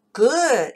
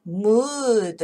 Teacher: 물론 우 중에는 good 이렇게 짧은 것도 있는가 하면 mood 이렇게 긴 우 소리도 있죠